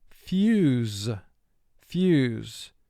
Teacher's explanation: U is representing its first long sound, U, which is the Y sound combined with the OO sound. So no special mark is made to it.